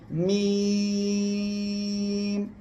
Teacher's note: করবেন উচ্চারণের সময় আপনার মনে রাখতে হবে এই যে দুই ঠোঁট এই দুই ঠোঁটের বাইরের অংশ বা শুকনো অংশ থেকে মিম অক্ষরটি উচ্চারণ হবে